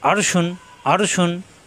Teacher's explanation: আ কণ্ঠনালীতে চাপ, র মোটা, শিন শ্বাস আওয়াজ।